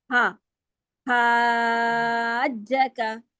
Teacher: ہا میں کیا ہوتا ہے کہ ہمس پہلے آتا ہے. آپ کو سانس جیسی آواز ہے نا, ہوا کی آواز پہلے آواز آئے گی.